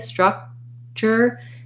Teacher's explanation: So building from structure, rewriting this as this is a vowel schwa, so thinking about that as a, and then build from the first R sound, ra, tra, stra, struck. We put a K there, but in structure, we don't really release it. So I go up to the K, structure, and I release it right into the CH sound, and then I have my R sound.